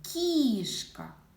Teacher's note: А якщо стоїть звук к перед і дещо пом'якшується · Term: М'який приголосний